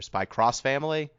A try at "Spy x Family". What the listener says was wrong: I just call it Spy Family. It's like Hunter x Hunter. You don't pronounce the X. It's Hunter Hunter.